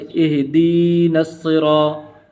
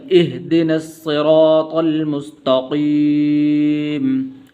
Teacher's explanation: دال کو لمبا نہیں کرنا کیونکہ اس سے آگے زیر یا نہیں ہے